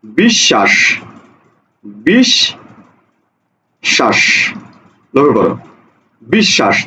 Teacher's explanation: দেখো তালব্য স দুইবার উচ্চারণ হয়েছে। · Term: দ্বিত্ব